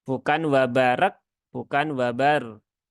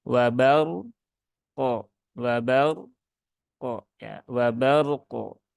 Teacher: Nah, padahal ini hurufnya sudah nyata-nyata tertulis, maka jangan dihilangkan. Sehingga roknya dibaca tebal, tunaikan tawasudnya, kemudian kofnya wajib dikolkolahkan